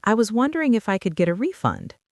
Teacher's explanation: Your voice definitely should go up at the end of refund.